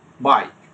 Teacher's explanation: জিহ্বার পজিশনটা একটা দিয়ে শুরু হয়, আরেকটার দিকে চলে যায়, একটু গ্লাইড হয়ে যায়। Okay, the first sound is usually stronger and longer, while the second sound is a shorter glide. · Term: গ্লাইডিং ভাওয়েলস